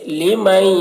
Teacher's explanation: یضاعف لمن، یہاں پر دیکھیے نون ساکن کے بعد حروف ادغام میں سے یا ہے تو نون کو یا کے ساتھ ملا کر غنہ کے ساتھ پڑھیں گے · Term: ادغام ناقص